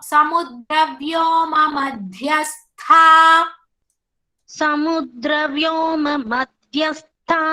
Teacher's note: dha is mahaprana tha also mahaprana